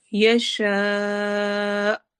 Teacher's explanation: آخر میں حمزہ پہ جھٹکا ہوگا